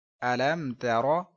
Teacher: میم ساکن میں ہم نے غنہ نہیں کیا ہے کیونکہ یہاں پر آپ دیکھ سکتے ہیں کہ میم ساکن کے بعد نہ تو با آ رہا ہے نہ میم آ رہا ہے، بلکہ ان دونوں حروفوں کے علاوہ یہ تا آیا ہے، اس لیے ہم نے یہاں پر غنہ نہیں کیا، اظہار شفوی کا قاعدہ ہوا ہے۔